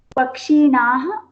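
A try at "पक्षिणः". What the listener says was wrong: There is no dirgha. That's why I'm making many of you read, okay, so that we get that shuddhatva.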